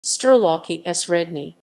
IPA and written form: stɛrˈwafki ˈɕrɛdɲɛ (Sterławki Średnie)